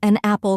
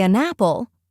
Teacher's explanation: It sounds smoother, like one word. >> That makes sense. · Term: connected speech